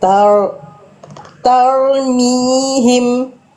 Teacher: Fathah tebal dan jangan sampai hilang getarannya. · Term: ro sukun